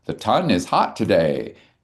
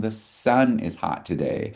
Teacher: when a child has the phonological process of stopping sounds and would say like ton because it's a stop for sun